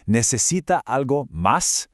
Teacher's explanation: You hear the stress goes up on sí and then again on más. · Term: rhythm of questions